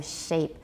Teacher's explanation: We definitely have labialization, but it's not rounding like with oo, so shape